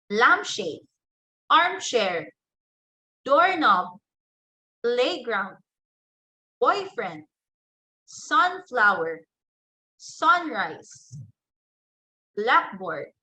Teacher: Under compound nouns, you give stress on the first word.